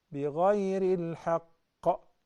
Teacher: So the qalqala happened because the letter qaf gained the sukoon.